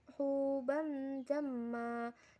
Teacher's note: Pada ayat 20, huban jamma, terdapat hukum bacaan ikhfa karena berharokat fathah tanwin bertemu huruf jim, cara membacanya samar dengan dengung dan ditahan selama 3 harokat. Dan terdapat bacaan mad iwad karena mim berharokat fathah tanwin dan di wakof dibaca panjang 2, 4, atau 5 harokat.